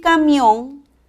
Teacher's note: la mayor fuerza de voz está en la última sílaba termina en n es una palabra aguda y debe de tirarse